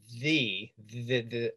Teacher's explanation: the voiced sound in the the the where your vocal chords are engaged